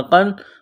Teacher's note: قاف کو موٹا کرنا ہے، قاف میں سختی کریں گے